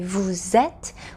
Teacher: And please notice that when we say vous êtes, we need to hear that ze sound because we are linking the final s in vous to the vowel e in êtes. This is called the liaison in French.